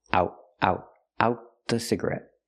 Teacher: the T in out is a stop T. Out the cigarette, because it's before a consonant.